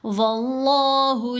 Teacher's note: ہم نے اس کو پر پڑھنا ہے، موٹا پڑھنا ہے، کیونکہ لام سے پہلے زبر ہے